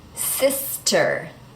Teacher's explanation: The S and the T are next to each other, so sister, the T doesn't change.